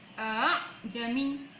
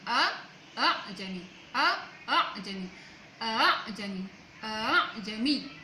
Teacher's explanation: mentahqiqkan hamzah yang pertama dan mentashilkan hamzah kedua